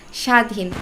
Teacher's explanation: স্বাধীন যেন ব ফলার কোন অস্তিত্ব নেই